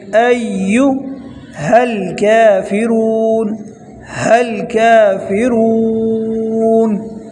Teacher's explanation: یہ کاف جو ہے یہ باریک والا ہے، اس کو موٹا نہیں پڑھنا